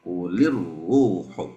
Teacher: Diulang sekali lagi. Kuli, lamnya jelas dulu, baru dimasukkan ke huruf ro. Kulir ruh.